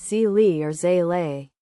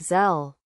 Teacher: A common mistake people make when pronouncing zel is to pronounce it as zi or zle. However, the correct pronunciation is a single syllable with a sharp Z sound and a short E sound